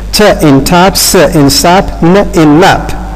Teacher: it's the blade of the tongue which is raised towards the alveolar ridge. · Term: alveolar consonants